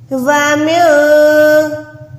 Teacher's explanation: نون ساکن کو میں نے چھپا کے ادا کیا